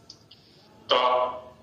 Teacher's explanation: दांत के स्पर्श से उच्चरित होने वाला वर्ण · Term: दंत्य